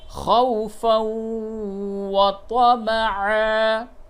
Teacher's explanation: وقف کی حالت میں وطمعا، اور تنوین کے بعد واو ہے، یہاں پہ ادغام مع الغنہ ہوگا